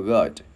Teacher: Chữ này chữ U không chu môi, gắn chữ G vào G, gắn chữ D vào good.